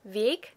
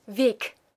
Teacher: all I do to emphasize the K, if I put it in there intentionally, is that I aspirate it at the end